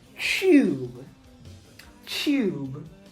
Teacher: I didn't look too deep into this, but this is palatalized. So there is actually an invisible Y sound in here for British and Australian English speakers. And so what happens when there's a T and a Y is that they turn this into a CH sound.